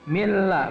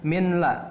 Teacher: Contoh yang berikutnya adalah nun mati bertemu dengan lam. Nun mati bertemu dengan lam, maka ini dibaca tidak boleh dengung. Masuk n-nya, dileburkan n-nya, dan tidak boleh dengung. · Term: idgham bila gunnah